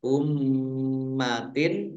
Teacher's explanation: mim tasdid dibaca gunnah atau mendengung, ditahan dua harokat.